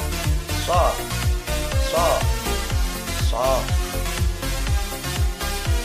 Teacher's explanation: Pangkal lidah naik ke atas langit-langit atau isti'la. Lidah bertemu atau nempel dengan langit-langit · ujung lidah berada pada halaman dua gigi seri bawah sehingga suara so keluar di antara dua gigi seri atas dan bawah. Sifatnya berdesis lepas atau hamas, lunak, dan suara tidak tertahan atau rohwa. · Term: safir